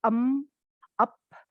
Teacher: Karena terlalu banyak bunyi-bunyi yang bilabial. Bilabial itu yang bibir atas ketemu bibir bawah.